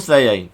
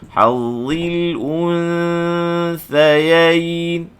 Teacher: nun sakinah bertemu sa ni ikhfa hakiki, maka bibir mesti kembali balik ke makhraj sa. Jangan sebut sayain.